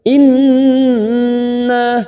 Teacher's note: huruf nun yang bertasdid gunna musaddadah kita tekan tiga ketuk